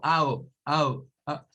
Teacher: Aquí tenemos el sonido para la O, que es una mezcla entre una A y una U